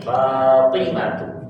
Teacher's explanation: Fatimatu panjang fanya. Tinnya pendek.